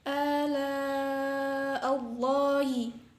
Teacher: lafadz Allah dibaca tafkhim sebab jatuh setelah harokat fathah